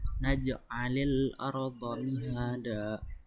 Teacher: terdapat pada huruf qalqalah jim berharokat sukun dan posisinya di tengah kalimat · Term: qalqalah sugro